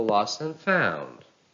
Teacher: whenever you have N Phrases the second word or let's say the word after and takes the stress